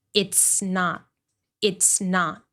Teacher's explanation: Make sure you're not saying is with a voiced sound. Is. You want to keep it short, so we know that you're pronouncing this contraction.